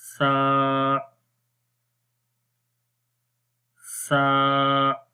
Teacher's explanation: اس حرف کو نرم پڑھنا ہے. زبان کی نوک کو اوپر والے دانتوں کے کناروں پر لگائیں گے جو سامنے والے دانت ہیں، تو اس وقت سا حرف پڑھا جاتا ہے اور اس کی آواز نرم رہتی ہے